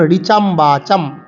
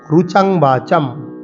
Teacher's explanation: যারা উৎকল উড়িষ্যাবাসী এবং দক্ষিণ ভারতীয় তারা কিন্তু ঋকে রু বলে